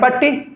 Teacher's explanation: संयुक्त के पहले वाला पे आपको जोर देना पड़ रहा है इसी को कहते हैं बल देना पड़ रहा है प्रातः विसर्ग बोले से पहले वाला वर्ण पे आपको जोर देना पड़ता है कि नहीं? · पट्टी बोले से पहले प जोर देना पड़ रहा है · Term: बलाघात